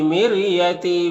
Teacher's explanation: فی میں یا مدہ ہے، ایک الف کے برابر کھینچیں گے، یہاں پر آئے ساکنہ سے پہلے میم کے نیچے زیر ہے تو را کو باریک پڑھیں گے